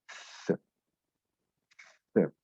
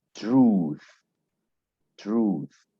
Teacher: Le TH peut se prononcer comme th. Donc, comme la langue entre les dents, ça souffle un peu là.